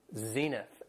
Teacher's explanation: Has 2 syllables and the stress is on the first syllable